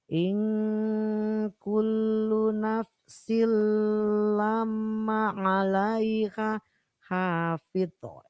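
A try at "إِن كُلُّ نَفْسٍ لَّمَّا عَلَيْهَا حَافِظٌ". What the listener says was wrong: Hati-hati. In kullu nafsin lamma mendengung. In kullu nafsin lamma 'alaiha hafidh. Pokoknya harus tebal. In kullu nafsin lamma 'alaiha hafidh.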